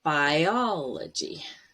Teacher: The stress is on the first O.